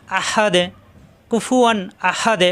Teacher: এই হা মিলবে দালের সাথে হাদে দালের সাকিন কলকলা হাদে কুফুয়ান আহাদে কুফুয়ান আহাদে এখানে কোন গুন্না হবে না এখানে